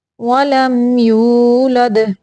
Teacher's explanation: یعنی میم کو صرف ظاہر کرنا، لمبا نہیں کرنا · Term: اظہار شفوی